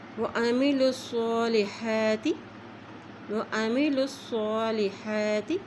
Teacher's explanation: صاد کے اوپر کھڑا زبر ہے اس لیے اس کو ایک حرکت لمبا پڑھیں گے